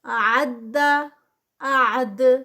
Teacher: دال کا اینڈ پہ قلقلہ آئے گا، دال کی آواز پلٹے گی